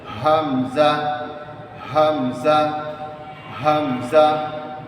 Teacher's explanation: হামজা উচ্চারণ করবো আমরা কণ্ঠনালীর শুরু থেকে। কণ্ঠনালী শুরু হচ্ছে একেবারে এখানে। · কন্ঠনালীর শুরু থেকে আমরা হামজা উচ্চারণ করব